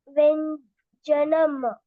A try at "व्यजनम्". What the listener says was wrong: व्यङ् कुत्रापि नास्ति. व्यजनम्. व्यजनम्. व्यजनम्. हलन्ते अस्ति. मकारः अस्ति. अत्र स्वरः नास्ति. अतः व्यजनम्. व्यजनम्.